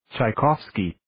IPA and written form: ,tʃeɪ'kɑvski (Tchaikovsky)